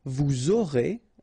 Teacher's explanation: final S not pronounced, and then you make the liaison, vous aurez